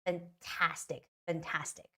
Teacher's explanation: the stress is on the second a